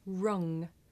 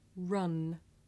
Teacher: Now ng is made at the back of the mouth and n is made behind the teeth.